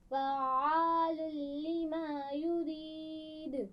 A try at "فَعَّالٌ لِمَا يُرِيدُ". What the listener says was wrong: بہت زیادہ گلا نہیں گھونٹنا.